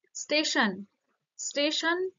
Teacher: এটারও শুরুতে সংযুক্ত ব্যঞ্জন সেটা কি হচ্ছে স্টেশন হয়ে যাচ্ছে অর্থাৎ শুরুতে একটা বা আদিতে একটা স্বরধ্বনির আগমন ঘটেছে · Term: আদি স্বরাগম